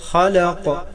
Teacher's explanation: قاف حروف قلقلہ ہے، ساکن ہونے کے حالات میں یہاں قلقلہ ہوگا بحالات وقف